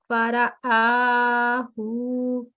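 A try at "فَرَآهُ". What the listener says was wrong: Yeah, just not more than 2 seconds. Fara'ahu.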